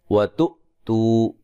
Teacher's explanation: حمزہ کو جھٹکے سے ادا کریں گے، تو و مدہ ہے.